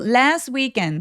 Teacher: 그래서 last weekend 이유는 뭐냐면 자음이 하나 둘 세 개 요렇게 자음이 이렇게 뭉쳐져 있을 때 중간에 오는 T나 D 발음들을 잘 안 합니다.